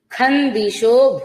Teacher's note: ఖందిషో ఇక్కడ అనుస్వారం నకారం తీసుకుంటాం